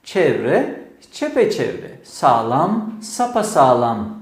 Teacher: Pekiştirmeli tekrarlarda pekiştirme hecesinden sonra ünlü türemesi görülebilir.